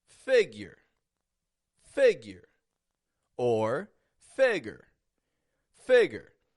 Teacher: it's raising in the beginning fig and then going flat on the ending